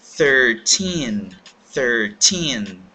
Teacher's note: número 13, nós temos o mesmo som fricativo de TH, que nós temos o número 3